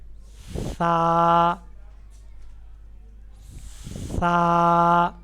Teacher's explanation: زبان کا سرا ثنایا علیہ یعنی سامنے والے ان دو دانتوں کے سرے سے لگے گا